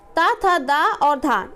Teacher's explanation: ता, था, दा और धा इनका उच्चारण हम दंत से करते हैं